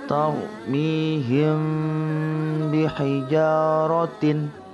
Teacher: Cara membacanya yaitu samar-samar di bibir dan didengungkan.